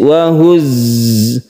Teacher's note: Di sini ada huruf za yang bertasydid, makanya kita harus menekan ke huruf za tersebut. Cara menekan huruf za itu dia itu berdesis. Wahuzzi. Jadi tidak ditekan, akan tetapi dia itu memiliki sifat sofir.